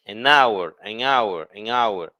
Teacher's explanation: the H doesn't sound, so that's why we say an hour.